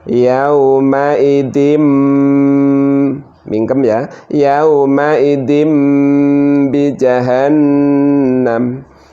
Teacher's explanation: nun sukun harus diganti dengan mim sukun